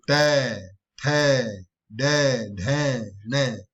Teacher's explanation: मूर्धन्य व्यंजन वे होते हैं जिनका उच्चारण जीवा का मूर्धा को स्पर्श करता है, यानी जीव का जो बीच वाला हिस्सा मूर्धा को स्पर्श करता है।